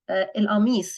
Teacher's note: we pronounce the qaf as a glottal stop over here